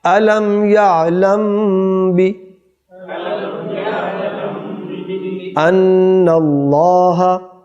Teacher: میم ساکن کے بعد با آ گیا تو یہ اخفاء شفوی ہے. یہاں پر ہم اس کو ملائیں گے، غنہ کریں گے. الم یعلم بی ان اللہ، اللہ کو پر کریں گے اور انا پر غنہ کریں گے.